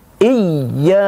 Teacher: Namun kalau ada tasjidnya, bacaannya kita tahan menjadi iya. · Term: Ya bertasjid